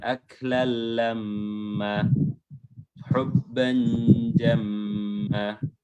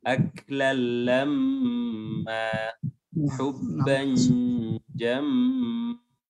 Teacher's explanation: Ini lamma dan jamma itu panjangnya 2 harokat.